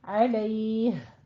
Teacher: आखिर पे जो हा है उसकी आवाज प्रोमिनेंट करनी है, अलैह। और ये हमारा वक्फ कौन सा हो जाएगा, वक्फ बिल इस्कान, ठीक है।